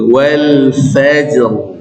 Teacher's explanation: Jadi fa-nya nggak jadi ikut tebal, fa. Nanti roknya yang tebal.